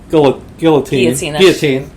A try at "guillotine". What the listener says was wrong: Don't pronounce the L's.